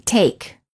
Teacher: The lips are not rounded and they are relaxed, and the tongue is tense, moving from mid-high position to high position.